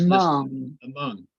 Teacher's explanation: Mung is the accented syllable, so the sound there is Among.